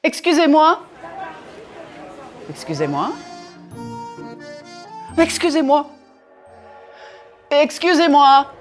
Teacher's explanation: Even though I varied the intonation to convey different meanings, I never punched the words too much. I didn't use a very wide range of pitch either.